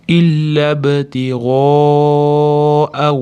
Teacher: madd harfi hamza bilan bir joyda kelyapti. To'rt, besh harakat cho'zish vojib. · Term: madd muttasil